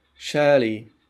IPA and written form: ˈʃɜːli (Shirley)